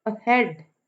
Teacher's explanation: हेड पे stress है